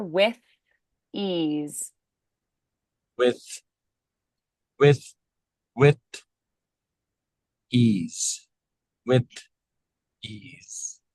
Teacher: try to elongate the unvoiced th a little bit to make it a little more clear